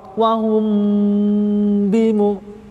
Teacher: Cara bacaannya disamarkan, kemudian ada dengungnya. Tempo dengungnya 2 harokat. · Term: ikhfa syafawi